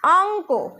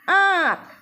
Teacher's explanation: কিন্তু এখানে স্বরধ্বনিটি অনুনাসিক হয়ে গেছে। উচ্চারণ করো, ছিল অঙ্ক, হয়ে গেল আঁক।